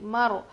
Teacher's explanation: رو کو جو ہے میم کو رو سے ملائیں گے، اور رو پر جزم ہے تو اس سے پہلے زبر ہو تو وہ رو موٹی پڑھی جائے گی